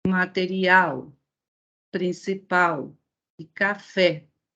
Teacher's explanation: essas 3 palavras possuem a última sílaba forte. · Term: palavras oxítonas